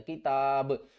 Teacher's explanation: تا کو ہم نے با کے ساتھ ملانا ہے، کتاب، اور با حروف قلقلہ میں سے ہے تو اس کے اوپر قلقلہ کریں گے